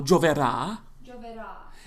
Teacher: So it stresses on the last syllable, gioverà, Gioverà.